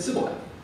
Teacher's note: They didn't have the sh sound in their dialect, and so they said sibboleth.